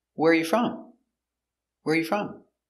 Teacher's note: put the stress on your first word where is the important word